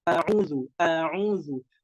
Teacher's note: hurufnya hamzah itu harus dijelaskan karena dia bersifat jelas dan harus pelan-pelannya dari makhrajnya dari pangkal tenggorokan. Makhrajnya dari pangkal tenggorokan.